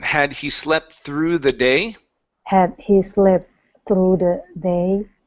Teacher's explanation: get your tongue out there for that TH.